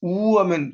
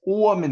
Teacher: 우하면 높은 발음이죠. 오하면 낮은 발음이죠.